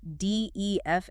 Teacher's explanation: 5 syllables. Stress on the second one.